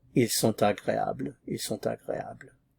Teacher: Normally you just pronounce this sont, but with the vowel following, the T suddenly appears in sound. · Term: liaison